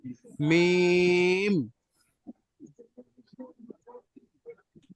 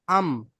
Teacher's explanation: দুই ঠোঁটের ভিজে অংশ মিলিত হয়ে উচ্চারণ হয় মিম